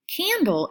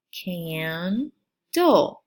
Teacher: Now, the consonant LE at the end of the word, the syllable, is a final syllable, which means it always is the last syllable at the end of the word. The consonant /LE syllable is very unique because it does not have a sounded out vowel. The E is silent in all of these syllables.